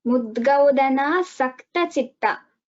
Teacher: I heard a slight shaka, so it is sakara here.